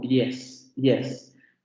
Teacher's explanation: Aproximante palatal sonora, y la tendríamos en palabras como yes.